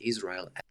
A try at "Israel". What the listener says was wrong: Okay, so first thing on the pronunciation of Israel, I'm hearing Israel, almost kind of like an Israel kind of thing going on. Whereas, in standard American English, you'd expect to hear Israel, eel on the vowels.